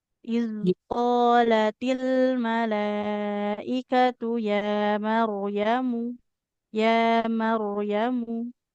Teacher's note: Mimnya dhammah tidak ada wawu di depannya. Maka nggak boleh kita panjangkan ya.